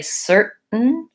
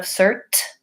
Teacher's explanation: instead of SERT with a puff of air we're saying sir we're moving up our tongue into that T position but we're not releasing the air so you have to make the T but not release the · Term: stop T